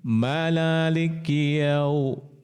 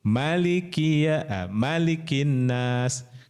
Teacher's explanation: Huruf Maliki yaumiddin ini maknya panjang ya, berbeda dengan Anas. Kalau Anas maknya pendek.